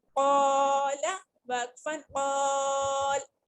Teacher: الف بھی قاف کے ساتھ الف بھی موٹا پڑا جا رہا ہے